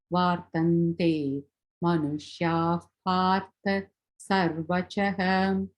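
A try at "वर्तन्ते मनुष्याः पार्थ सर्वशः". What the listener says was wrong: Very well read, yeah.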